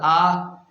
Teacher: حمزہ کا مخرج ہے انتہائی حلق، یعنی ہمارا یہ کھڈا، یہ حلق کی انتہا ہے، یہ حمزہ کے پڑھنے کا مخرج ہے۔